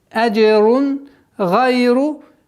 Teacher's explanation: Правило изхар, ясное произношение. Танвин, после которого идет гайн, гортанный звук, четкое ясное произношение, без никаких изменений.